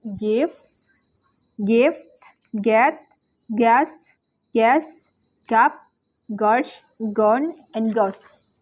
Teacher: voice velar stop sound ga